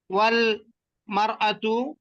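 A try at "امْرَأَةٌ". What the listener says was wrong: আর মারাতু আসে কেন? শুধু আলিফটা বাদ যাবে। তানবিন ফেলতেছেন কেন, কি কারণে? তানবিন পছন্দ করেন না? ফেলাই দেন কেন সেখানে সেখানে?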